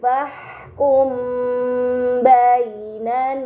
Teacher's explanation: terdapat mim sukun bertemu dengan huruf ba ini dinamakan Ikhfa Syafawi maka mim sukun harus dibaca samar dengan gunah yang dipanjangkan